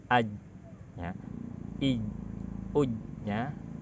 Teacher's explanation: Yang kedua, jim memiliki sifat yang namanya syiddah. Artinya ketika jim ini dilafalkan, apalagi ketika sukun, suaranya kuat, suaranya tertahan, tidak berjalan.